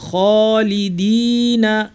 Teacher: খ ভারী, খ এবং সাথে আলিফ আছে, আলিফ সহ ভারী হবে। খালিদিনা, নাতে টান নাই, না ফি টান ছাড়া, পরে ফিতে সরাসরি চলে যাব।